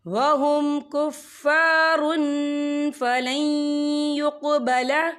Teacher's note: تنوین کے بعد جو ہے فا آ رہا ہے، اور فا جو ہے اکفا کا ورڈ ہے تو ہم یہاں اکفا کریں گے، تنوین کی آواز کو ناک میں چھپائیں گے۔